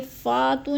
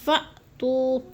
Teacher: فا حمزہ ساکنہ ہے، جھٹکا دے کے پڑھیں گے. فاتو نہیں پڑھنا ہم نے، اس کو پڑھنا ہے فأتو.